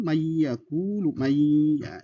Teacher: Salah satu contoh bagian dari huruf idgham bigunah. Ya, nun ketemu dengan ya itu dibaca dengan dengung